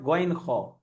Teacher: গলার শেষ ভাগ থেকে উচ্চারণ হয় গইন খ।